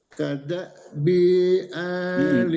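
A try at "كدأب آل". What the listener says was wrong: Kada bi ali, banyak pendek.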